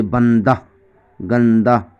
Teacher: ہائے مختفی اسے کہتے ہیں جس کی آواز الف کی طرح معلوم ہو